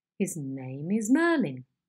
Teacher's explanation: the onset starts on a low pitch and there's a gradual rise to mid-pitch spread over the syllables of the head. It is marked with an arrow going up on the onset, and it sounds like this. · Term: rising head